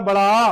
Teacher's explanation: तो इसलिए हमारा बड़ा आ जो है सबसे अधिक मुंह खुलता है। बड़े आ स्वर को जब हम बोलते हैं तो सबसे अधिक मुंह खुल जाता है। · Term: विवृत स्वर